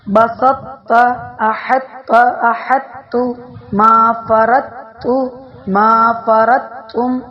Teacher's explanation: پہلے تا کو موٹا اور پھر تا کو باریک ادا کریں، اس کو ادغام ناقص کہتے ہیں